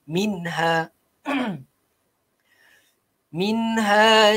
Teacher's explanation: nun mati bertemu dengan ha, tak perlu pada dengung